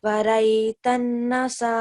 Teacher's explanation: letter ra with the fatha or dhamma is a thick ra. So we're supposed to keep the sound thick and heavy. Over here we have Noon Mushaddad and we follow the Ghunna rule.